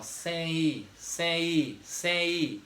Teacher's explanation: Quando eu falo a palavra sem, ó, sem, esse M é como falasse assim, ó, sem I, sem I, sem I. Então esse M se transforma em um I. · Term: semivogal